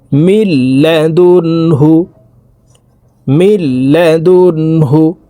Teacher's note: যে নুন সাকিনের পরে ইদগামে বেলাগুন্নার হরফ লাম আসছে এ কারণে এই মিম তাশদি লাম এর সাথে গুন্না ছাড়া মিলাইয়া পড়বো